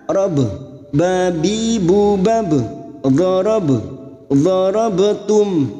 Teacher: Darabtum, bak sukun yang mati asli di tengah kalimat, qalqalah sugro, jangan lupa dipantulkan